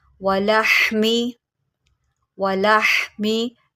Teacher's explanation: हा को आप निकालेंगे हलक के दरमियान से